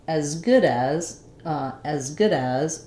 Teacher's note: it's not a clear vowel it's very reduced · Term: reduced vowel